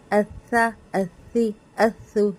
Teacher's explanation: हमजा सा ज़बर अस सा ज़बर सा अस हमजा सा ज़बर अस सा ज़ी अस हमजा सा ज़बर अस सा पेश सु असु असु इसको अस्वा असु करके ना मोटा नहीं करना ठीक है अस्स असु जबबान बिलकुल फ्लैट रहेगी तो कभी भी सा मोटा नहीं होगा